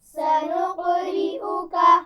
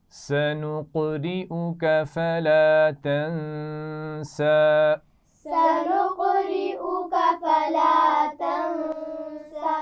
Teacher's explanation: قلقلہ بھی جب آپ کر رہے ہوں گے تو اس کا خیال رکھنا ہے کہ آواز کو باریک نہیں کرنا قاف کی